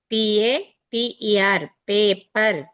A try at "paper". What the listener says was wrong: ఇది ఫాస్ట్ చదువమ్మా, విడగొట్టద్దు నువ్వు. మాకు విడగొడితే పద్ధతి కాదు నాకు. పిఆర్ పేపర్ అంతే, సరక్కని వెళ్ళిపోయిన పాము.